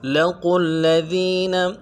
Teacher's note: قوف کو موٹا کرنا ہے، آگے لام کے ساتھ ملانا ہے، لام کے اوپر تشدید ہے